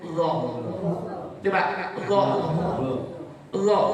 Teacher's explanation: Makhrajnya huruf dha itu ujungnya lidah nempel dengan ujungnya gigi sama dengan fa tadi.